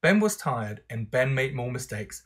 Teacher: there's a falling intonation on the whole construct. The meaning of the whole thing then is statement.